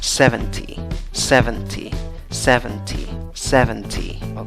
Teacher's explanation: en la última sílaba tienes una y fuerte una y larga